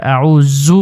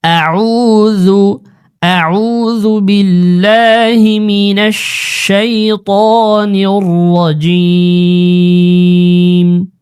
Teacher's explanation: আউজু এটা সবাই এই বোলটা করে আউজু পরে জু জালের উচ্চারণ শক্ত করে আউজু পরে জু হবে না জু নরম করে জিহ্বার আগা থেকে জু একেবারে হালকা করে আউজু আউজুবিল্লাহি মিনাশ শাইতানির রাজীম আউজুবিল্লাহি মিনাশ শাইত উচ্চারণ মোটা খেয়াল রাখতে হবে।